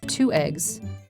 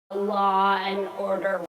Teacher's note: This is hard attack. Here the separating sound is not r, but a glottal stop, which gives 2 eggs, law and order.